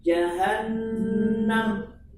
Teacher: gunnah 2 harakat pada nun